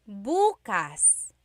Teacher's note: emphasis is on the first syllable